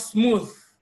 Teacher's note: this is actually a voiced dental fricative